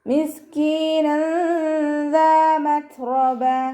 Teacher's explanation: ത സുക്കൂനാവുമ്പോൾ കുറച്ച് എയർ പുറത്തോട്ട് പോണ സൗണ്ടിൽ വേണം ഉച്ചരിക്കാൻ · തെൻവീനിലുള്ള നൂനിനെ മറച്ചു വെച്ചിട്ട് മണിച്ചോതി കൊടുക്കുക കേട്ടോ. ദാലിൻ്റെ കൂടെ അലിഫ് മദ് വന്നിട്ടുണ്ട്, 2 കൗണ്ട് നീട്ടിക്കൊടുക്കുക. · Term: ഇഖ്ഫാ